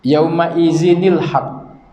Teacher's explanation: Yawma izinil haqq, apabila tanwin baris 2 berjumpa dengan alif yang tidak berbaris ataupun alif wasal. Alif ni bila kita sambung bacaan tidak dibaca dia. Tapi bila kita ibtidak, maka kena baca dia.